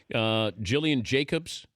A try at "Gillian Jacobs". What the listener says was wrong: Yes, of Community, Gillian Jacobs. It's a hard G. Yes, it's a hard G. Gillian.